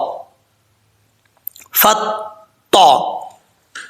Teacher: اب یہاں پر تو حروف مستعلیہ میں سے ہے پر پڑھا جائے گا، اس کو باریک نہیں پڑھنا۔ اس کا مخرج ہے زبان کی نوک اوپر والے دانتوں کی جڑوں سے لگے